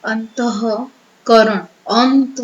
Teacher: એટલે તમને થોડો ખ્યાલ આવે સાથે સાથે અંતઃ કરણ અંતઃ હ ત ની પાછળ હ નું ઉચ્ચારણ થયું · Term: વિસર્ગ